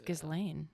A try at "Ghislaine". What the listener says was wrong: It's not. The S is silent.